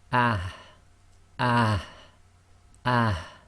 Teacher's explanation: the soft ha, which comes from the bottom of the throat. So both the Hamza and the soft ha originate from the same place.